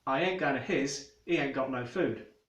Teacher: H dropping, which is where Cockneys tend to skip the H's at the start of words